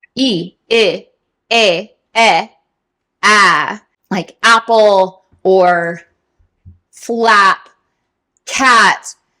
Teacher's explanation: This vowel is also very difficult for speakers coming into English because it is oftentimes nasalized a little bit. Ah, if I were to open more, ah, and not nasalize, it's ah. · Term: short A vowel